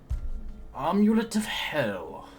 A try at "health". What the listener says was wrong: Health. I heard you said hell.